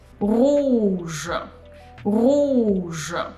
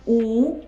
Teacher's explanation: oo, this is closed sound, so oo, and you pull your tongue back.